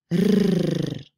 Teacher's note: the tip of the tongue is rapidly touching and untouching the passive articulator, that is the alveolar ridge. So it's very quickly bouncing off the alveolar ridge, and that creates that trill sound.